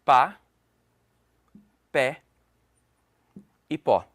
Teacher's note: eu tenho uma sílaba apenas e elas têm uma pronúncia aberta